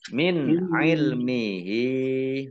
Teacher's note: nun sukun bertemu dengan huruf ain, bacaan idhar, dibaca jelas